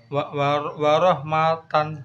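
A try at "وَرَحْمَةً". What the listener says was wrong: Maknya pendek. Matan. Waroh matan. Maknya pendek. Waroh matan.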